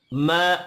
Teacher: मीम के ऊपर खड़ी जबर है, एक अलिफ के बराबर खींच कर पढ़ेंगे, हरकत खींच कर नहीं पढ़ी जाएंगी।